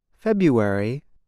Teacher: the month February is said like this February the R is not pronounced